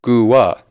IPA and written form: ˈguˌə (-gua-)